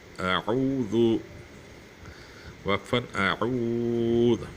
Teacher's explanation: حمزہ سختی سے ادا ہو اور عین نرمی سے ادا ہو